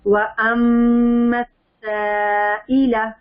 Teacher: سائلہ لام کو لمبا نہیں کرنا